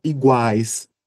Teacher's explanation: Como a palavra iguais, que nós temos o encontro do som de U, A e I, em uma mesma sílaba. E o que vai ocupar a posição central é sempre a sílaba mais forte, neste caso o A. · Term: tritongo